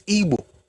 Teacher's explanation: When you pronounce B, it's ingressive.